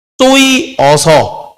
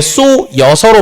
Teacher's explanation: 자, 그 다음 쏘이어서 여기에서 이게 쏘여서로 발음됐어요. 이중모음 여가 됐으니까 앞에가 반모음으로 바뀌었구나. 이 어였는데 변동 후에 여가 됐다. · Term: 반모음 이 교체